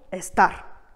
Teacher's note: L'accent tonique va donc se placer sur cette dernière syllabe et porter sur le A qui précède immédiatement le R.